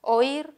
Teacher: aquí sí hay un hiato, la que suena más es la I